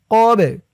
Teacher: এই বাটা কলকলার হরফ ধাক্কা দিয়ে পড়তে হবে।